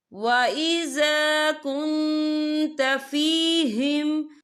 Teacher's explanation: وَإِذَا كُنْتَ فِيهِمْ، یا دیکھیں وَإِذَا كُن، یہاں نون ساکن ہے، نون ساکن کے بعد جو ہے تا ہے، اور تا جو ہے اکفا کا ورڈ ہے تو ہم یہاں اکفا کریں گے، نون ساکن کی آواز کو ناک میں چھپائیں گے